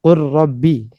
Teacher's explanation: Jadi idghamnya lam bersama dengan ra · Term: idghamul lam ma'ra